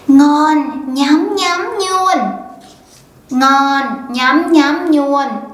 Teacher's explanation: in the South, we love to adapt the nya version into words starting with la for the cute effect